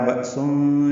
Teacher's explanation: بأسن میں حمزہ ساکن جھٹکے سے ادا ہوگا